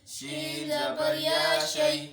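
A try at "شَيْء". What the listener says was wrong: شے لمبا نہیں کرنا. لا شے.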